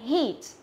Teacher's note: Hit là sai mà là heat. Đọc căng miệng là heat, ok? Nó là âm Y dài.